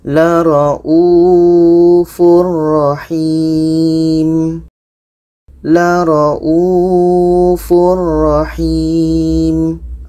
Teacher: Bermakna ini tanwin bertemu roh tidak dengung.